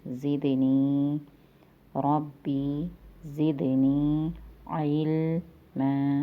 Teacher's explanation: عین حلق کے درمیان سے ادا ہوگا، حروف حلقی میں سے ہے